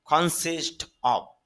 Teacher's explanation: এই এফটা ফর মত না হয়ে এখানে ভর মত হবে · যদি আপনারা এটাকে অফ মানে ফর মতো বলেন, মনে রাখবেন এটা ফর মতো হবে না, এখানে অ্যাপটা ভি এর মতো হবে, অর্থাৎ মহাপ্রাণ যে ভ, অর্থাৎ ভালো লিখতে যে ব প্রয়োজন হয়, এই অ্যাপটা ফর মতো না হয়ে এখানে ভর মতো হবে, এই জন্য হবে কনসিস্ট অফ, গঠিত হওয়া।